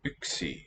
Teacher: Yksi, the cluster there, velar and then dental